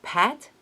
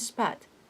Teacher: pat and spat peak and speak each one with the first aspirated and the second non-aspirated